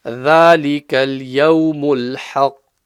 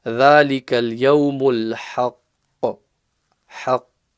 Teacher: qaf is going to be pushed a little bit before the qalqala comes out